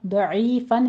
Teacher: عین کو وسط حلق سے نکالیں گے ، اور یا مدہ ادا کرنی ہے، 2 کاؤنٹ کرنا ہے،